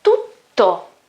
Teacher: you can listen to my second T, the double T, which is stronger and it is also longer.